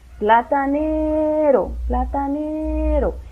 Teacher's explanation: Entonces ustedes ven que alarga una sílaba, la ne, ¿verdad? Platanero. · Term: la tónica